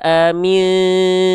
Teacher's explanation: Udah disamarkan bunyi konsonan an-nya, enggak dibaca jelas lagi.